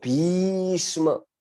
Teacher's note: वो व्यवहार में दो तीन शब्द ही आते हैं, जैसे पूरे महाभारत में भीष्म ऐसा है, उसमें भी को हम लंबी करते हैं तो भीष्म ऐसा बोलते हैं। वो त्रिमात्रिक उच्चारण होता है